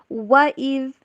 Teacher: وا کو انگلش میں ڈبلیو والی ساؤنڈ کے اوپر پڑھنا ہے، وی والی ساؤنڈ کے اوپر نہیں۔